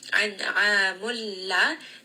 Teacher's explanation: An'amulla, this is going to be idgham without ghunna. Just merge these two together, no sound of that noon.